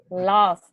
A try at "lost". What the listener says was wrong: Đúng rồi.